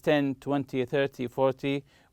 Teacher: such as 10 20 30 40 we usually stress the first syllable